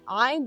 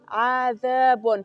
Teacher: وګورئ ذال تاسو تلفظ کې د ژبې له څوکې نه ادا کیږي. عذاب له ثنایا او علیا غاښو سره د ژبې څوکه نښلول کیږي، ذال ادا کیږي